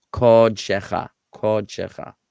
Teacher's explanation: This kamatz is a kamatz katan, and it's pronounced O. It's a replacement for this vowel in the construct form.